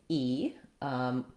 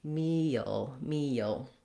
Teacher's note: So that's the high front tense vowel, E